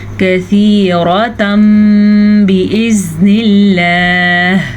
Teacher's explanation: تنوین کے بعد حرف با آ گیا ہے تو تنوین کو میم میں بدل دیں گے. اسے کہتے ہیں اقلاب کا قاعدہ.